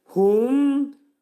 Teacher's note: وَلَا lə 2 səs. Hum, mim hərfi izhardır, ağız yumulur